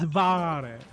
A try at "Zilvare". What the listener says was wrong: Gotta roll that R.